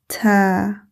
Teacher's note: The articulation of Thaa is produced by touching the tip of the tongue to the upper front teeth. Release the tongue and say Ta.